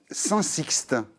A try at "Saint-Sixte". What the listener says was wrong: Je vais corriger Saint-Cy. Le X, nous, on ne prononce pas. On dit